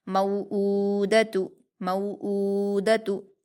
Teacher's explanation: मऊदतु, मीम पर वाउलीन है, इसको हम नरम आवाज़ के साथ जल्दी पढ़ेंगे। हमज़ा पर उल्टा पेश है, इसको हम वाव मद्दा की तरह 2 हरकत खींच कर पढ़ेंगे। दाल पर हरकतें जल्दी पढ़ेंगे।